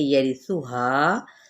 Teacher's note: سا نرمی کے ساتھ، ہا کو 2 حرکت نہیں بلکہ ہم نے 4 حرکت یعنی 2 الف کے برابر کھینچنا ہے